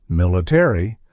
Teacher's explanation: in British English they often drop the a leading to a pronunciation like military where the a Fades away